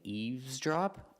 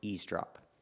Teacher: people pronounce it both ways, with the V and without the V sound